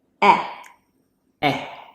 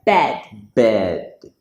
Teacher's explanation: This word should be said bed. So the eh in the middle is formed by making your lips very wide and your mouth kind of flat